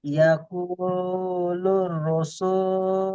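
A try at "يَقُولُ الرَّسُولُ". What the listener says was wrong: রসু নয়, রসু বলে তো আপনার রজ ইয়ে হয়েছে, বারিক হয়েছে। র এর পাশে জাবার আছে, হারা পুর হবে। ইয়াকুলুর রসু, র, র, র, র পুর হলে কি হবে, গোল হবে। ইয়াকুলুর রসুলু।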